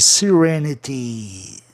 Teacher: a sílaba tônica é no E de RE. É a terceira de trás para frente.